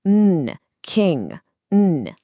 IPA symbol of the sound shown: ŋ